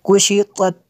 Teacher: पहले तो को पुर करना है, आगे वाले ता को बरीक करना है।